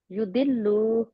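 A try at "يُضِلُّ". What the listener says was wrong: अब युदिल्लू कैसे बन गया वो मुझे बताए, युदिल्लू कैसे बन गया? लाम लंबा होगा? हाँ, लाम नहीं लंबा होगा ना, लाम को लंबा नहीं करेंगे, सिर्फ और सिर्फ क्या करेंगे लाम को?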